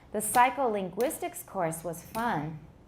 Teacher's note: The psycholinguistics course, first of all, we pause there because it's the end of the subject. And then course is not stressed because it's the head of this compound noun. Therefore, the tonic stress falls on gwist.